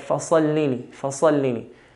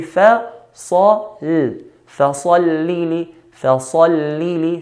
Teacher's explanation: Fa here is a light letter, Sad is a heavy letter, and Lam is a light letter